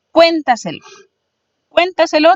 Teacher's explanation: tiene su sílaba tónica en la cuarta de atrás o hacia adelante